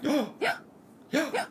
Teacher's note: for some reason we usually say it on an inhale and this is not because we're sick we just we just